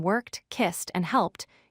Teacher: When you hear the T sound, like in worked, kissed, and helped, your voice does not vibrate.